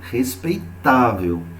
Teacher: Como é o caso da palavra que aparece aqui, respeitável. Então, eu sei que o tá é a minha sílaba tônica. Então, eu sei que ela é paroxítona.